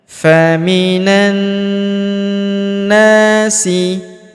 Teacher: huruf na kita panjangkan 2 harokat karena terdapat alif di depannya